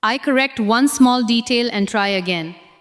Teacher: Stress one, detail, and again.